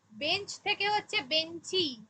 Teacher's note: শব্দের শেষে অতিরিক্ত স্বরধ্বনির আগমন